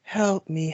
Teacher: talking in that very soft, breathy voice